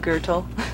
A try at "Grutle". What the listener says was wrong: Gürtel? It's G-R-U-T-L-E, so it's not Gürtel, it's Grütle. Not Gürtel, but Grütle.